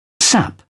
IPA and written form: sæp (sap)